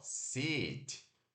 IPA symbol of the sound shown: ɪ